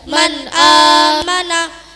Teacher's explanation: nun mati atau tanwin dibaca jelas tanpa berdengung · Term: Idhar